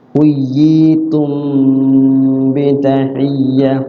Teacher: mim ketemu ba adalah ikhfa syafawi maksudnya yaitu mimnya disamarkan mimnya disamarkan cara bacanya ditahan